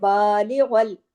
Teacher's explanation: با کے اوپر کھڑی زبر ہے، الف کے برابر کھینچے گا، بالغل، غائن کو ہیوی پڑھنا ہے.